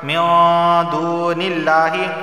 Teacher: نون ساکن کے بعد دال حروف اخفا کا اخفا والا غنہ ہوگا، اور واو سے پہلے پیش ہے ایک الف کے برابر کھینچ کر پڑھا جائے گا، اور یہاں دیکھیں لفظ اللہ سے پہلے زیر آیا ہے تو لفظ اللہ کو باریک پڑھا جائے گا۔